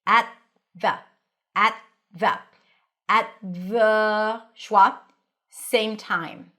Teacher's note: You don't have to pop the t at. No need. · place your tongue on the teeth for the T, at, and then it's already ready for the TH. The. At the.